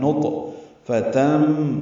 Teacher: ہے اور اس پہ قلقلہ ہے، نطفتم، تم میں ادغام ہے، تنوین کے بعد میم آنے کی وجہ سے ادغام ناقص مع الغنہ